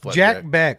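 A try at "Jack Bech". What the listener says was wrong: Jack Besh? He pronounces it Besh. I thought it was Beck too, and the announcer said Besh. It is Jack Besh.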